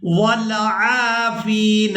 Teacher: عین کو الف مدہ کی وجہ سے اور فا کو یا مدہ کی وجہ سے کھینچ کر ادا کریں گے